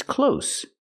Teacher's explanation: this word is close with no voice s